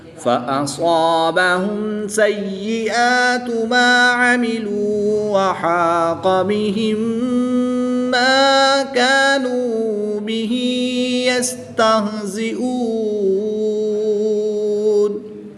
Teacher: میم ساکن کے بعد دوسری میم ہے تو یہاں پر ادغام شفوی ہوگا، یعنی غنہ کر کے پڑھیں گے۔